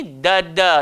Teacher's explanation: Hujung lidah, langgar belakang, gigi atas. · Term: huruf dal